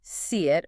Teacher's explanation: To make the E sound, your tongue is already up high in front, very close to the Y position. As your tongue then moves away from that high E position to get ready for the next vowel sound, it has to pass through the slightly constricted Y spot.